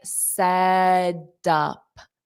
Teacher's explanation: a native speaker is going to take this T and turn it into a soft D because it's between two vowels